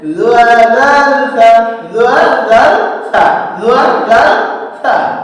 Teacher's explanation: জিহ্বার আগা সামনের উপরের দুই দাঁতের আগার সঙ্গে লাগিয়ে